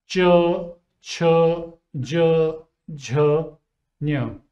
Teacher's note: The front part of the tongue touches the hard palate up. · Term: palatal sounds